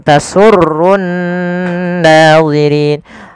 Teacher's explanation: awalnya nadhirina, karena kita waqaf nunnya mati. Dan sebelum nun yang dimatikan ada huruf mad, maka inilah yang dinamakan dengan mad arid lisukun.